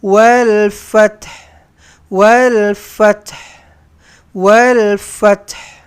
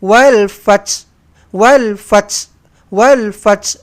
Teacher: Bunyikan juga ha mati di belakang. Biasanya kesalahan yang berlaku di sini adalah kita baca huruf ha tu habis ghaib hilang.